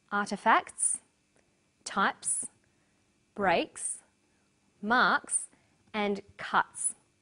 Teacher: The second way S is pronounced at the end of a word is s. It's pronounced this way after voiceless consonants.